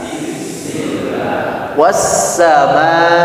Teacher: kalau sin ini lebih seperti ke suara ular katanya. Jelas desisanya. Dan suaranya tipis, tidak nggak begitu, tapi tipis.